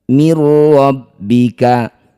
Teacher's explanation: Nun sukun bertemu ro disebut bacaan namanya idgham bila ghunah. Masukkan bunyi nun pada ro tanpa dengung. Mirbika karena dihentikan maka huruf terakhir kaf ini kita sukunkan. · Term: idgham bila gunnah